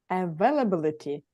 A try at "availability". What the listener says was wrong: Я, только ударение, да, чуть-чуть. Availability.